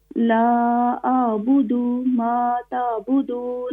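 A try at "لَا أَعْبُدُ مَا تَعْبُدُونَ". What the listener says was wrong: یہ دال کو کھینچے نہیں, اس کو شارٹ کریں, زبر زیر حرکات کو بغیر کھینچے بغیر جھٹکا دیے.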